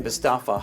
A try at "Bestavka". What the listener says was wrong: Bestavka, you pronounced his name. Bestaf, you forgot the K.